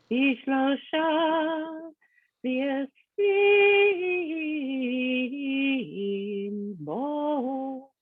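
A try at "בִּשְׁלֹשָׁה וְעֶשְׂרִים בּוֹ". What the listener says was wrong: I did miss the connector note of the Munach.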